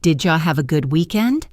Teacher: The words did you often get reduced to did ya.